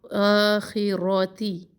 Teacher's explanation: تا کو زیر کے ساتھ مجہول نہ کرے. تے نہ پڑھے، تی پڑھے.